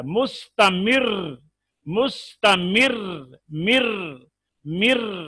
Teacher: रा की अदायगी में जबान कप कपाए, इसमें राशा या लर्जा हो, सिर्फ रा में पाई जाती है। देखिए, खुसूसन जब रा के ऊपर शद हो और उसके ऊपर हम वक्फ करें तो ज्यादा वाज़ेह हो जाता है। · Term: मुशाबहत तकरार